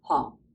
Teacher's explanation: Again, fourth tone, low falling, hong.